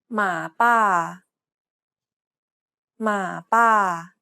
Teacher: though both the first and second syllables contain a long vowel the first long vowel is pronounced shorter than the second one because the syllable is unstressed